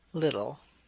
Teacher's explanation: Medial T sounds like a soft D, and children represent this perception with voicing.